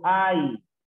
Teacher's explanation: en esta palabra, en hay, encontramos una vocal abierta y una vocal cerrada. Por ende, si es una vocal abierta y una vocal cerrada, es un diptongo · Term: diptongo decreciente